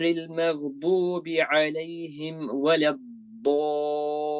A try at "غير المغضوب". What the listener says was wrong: Okay, so the ghayn, the second ghayn, which is al-maghdubi, you need to make that fuller in terms of heaviness and make it clear, recite clearly as well. So غير المغضوب غير المغضوب. More heavy and more defined. غير المغضوب is very clear.